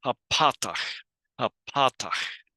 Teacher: we go back to the original vowel, the ah, but it even is lengthened because of the shiluk.